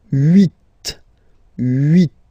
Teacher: final T is pronounced